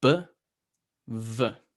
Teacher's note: Okay, the sounds coming, the articulation is the exact same. It's your lips hitting each other, but with the V, it flows.